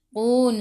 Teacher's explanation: Qun sebelum huruf akhir ada waw yang tak ada baris ma'arif sukun, boleh baca 2, 4 atau 6 harakat. Matikan dengan huruf nun, hujung lidah menyentuh gusi atas.